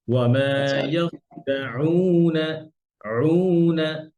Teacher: আইনটা আসতেছে না মাঝখান থেকে, গলার মাঝখান থেকে।